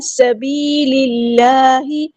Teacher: لام کو ہم لام کے ساتھ ملا دیں گے، حمزۃ الوصل ہمارا ڈراپ ہو جائے گا. اللہ کا جو لام ہے یہاں پہ باریک لائٹ لیٹر ہے